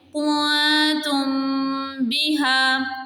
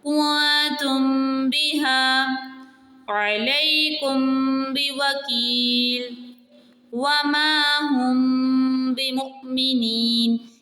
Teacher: میم کو ہم نے واضح کرنا ہے اور با کو تھوڑا سا چھپا کے پڑھنا ہے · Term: اخفاء شفوی